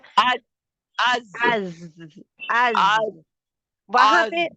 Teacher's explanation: buzzing sound पाई जाती है, क्योंकि ये अज जहर में आती है